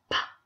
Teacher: when I make the consonant sound for P, P, my lips are blocking that sound